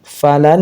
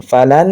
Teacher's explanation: nun ya langsung masuk ke nun berikutnya tapi digunah gunah itu ditahan ya mendengung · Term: idgham bigunah